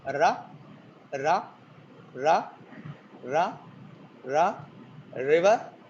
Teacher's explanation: r is an approximant or continuant in English, but in Telugu we have it as tap